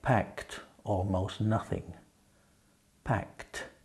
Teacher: You hear the T sound? The ED is pronounced T.